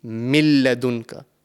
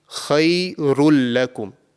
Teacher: the tanween sound, which is the noon sakin, would not be produced, and we will be saying khayrul lakum. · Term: completely assimilated